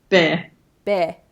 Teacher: an Australian accent might actually be easier for some non-native speakers because they could just go bear. And then they don't have to go to that 'r' /ɚ/ sound.